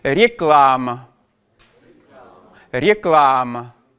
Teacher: on va avoir un a très clair quand il va être sous l'accent et on va avoir une atténuation de ce a · L'accent tonique vient sur la deuxième syllabe, ce qui fait qu'on va avoir des modifications de prononciation sur les syllabes que l'on appelle atones, c'est-à-dire non accentuées. Et on va avoir un A qui ne va pas être prononcé pleinement A, mais qui va s'orienter plutôt vers quelque chose comme un E.